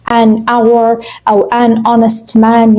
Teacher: الكلمة نفسها بتبدأ بحرف ال H، لكن لما بتيجي تقولها أو تنطقها فأنت بتقول الفويس نفسه بتاع حرف ال O، فبالتالي this is a vowel sound.